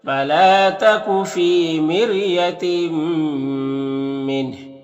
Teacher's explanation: یہاں پر تنوین کے بعد میم حروف یومین میں سے تو ادغام ناقص ہوگا، غنہ کے ساتھ پڑھیں گے · فی میں یا مدہ ہے، ایک الف کے برابر کھینچیں گے · فلا میں الف مدہ ہے، ایک الف کے برابر کھینچیں گے ، فی میں یا مدہ ہے، ایک الف کے برابر کھینچیں